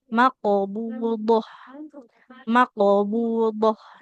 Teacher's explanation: Hati-hati ya bunyi qalqalah huruf qaf itu tidak makbudoh, tidak make. Karena huruf qaf itu kan huruf yang tebal ya, tidak mengalirkan nafas. Jadi ketika qalqalah dia ikut tebal. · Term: qalqalah di huruf qaf